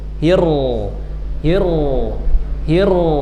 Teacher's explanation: r-nya ada tapi satu sentuh sekali sentuh. Hir, hir hir ada r selebihnya bunyi tafkhim.